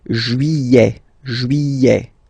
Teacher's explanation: Don't pronounce this final T, E-T here at the end.